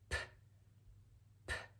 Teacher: The P is the result of the lips coming together and forming a little bit of pressure until the breath is then released.